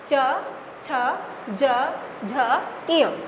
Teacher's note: यहाँ पर जीभ का पहला सिरा, एकदम शुरुआत का सिरा, ये दोनों और दोनों दांत की लाइनें हमारी जुड़ती हैं, और जो जीभ का पहला सिरा है वो तालु के पहले सिरे से मिलता है